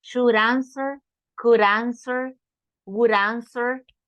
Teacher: could would or should join could you would you should you when you have a vowel make the D like an r and join it